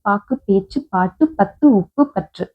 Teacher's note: சொல்லின் இறுதியில் வரும்போது ஒரு மாத்திரை பதிலாக அரை மாத்திரை அளவாக குறைந்து ஒலிக்கும். இப்படி குறைந்து ஒளிக்கிறதுக்குதான் குற்றியல் உகரம் என்று பெயர். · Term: குற்றியலுகரம்